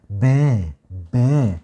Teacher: غير كده لو طلع معايا صوت زي صوت الباء مثلا وقلنا با، با، فكده الصوت غير طبيعي وبالتالي كده الصوت أنفي